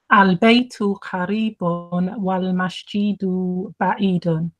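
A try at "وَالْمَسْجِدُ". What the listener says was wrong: Okay, you're still saying wal masjidu. It's not masjidu. Yes, al-baytu qaribun wal masjidu ba'idun. That's why I asked you to read it quickly in case, just so I know if you were elongating it or not, and you were.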